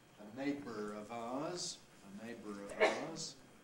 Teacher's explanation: A neighbour of ours, well, linking R, a neighbour of ours. Schwa plus R, syllabic consonant formation into syllabic R.